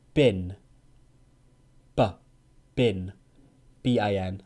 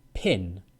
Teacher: ba is voiced. So your throat vibrates, and you use your throat to make the sound.